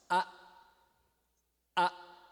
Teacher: um fechamento total da glote o ar não passa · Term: glotal